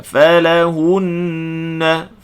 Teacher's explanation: Falahunna hun panjangkan dengung musyaddadah. Dengung musyaddadah wajibul gunnah.